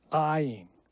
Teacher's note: it's the glottal stop where you're trying to force air through and trying to stop it at the same time